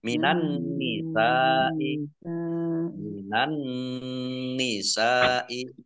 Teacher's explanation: Nun tasdid dibaca mendengung atau gunnah ditahan 2 harokat.